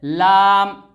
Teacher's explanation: जुबान का किनारा और सनाया और रुबाई और अनियाब और जवाहिक के मसूड़े से मिलकर लाम अदा होता है